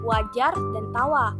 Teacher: bunyi semivokal bilabial atau dorsovelar bersuara